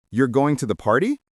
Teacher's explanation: with your voice rising at the end, it's a question. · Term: intonation